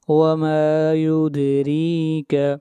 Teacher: دال کے اوپر قلقلہ کریں گے اور را کو باریک پڑھیں گے